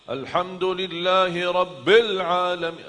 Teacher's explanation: Rabbil tekankan ba tetap tekan ba karena ada tasdid kan. Rabbil terus masuk langsung sambung ke huruf lam.